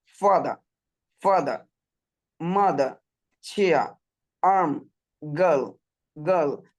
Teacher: আর এর উচ্চারণটাই silent, total silent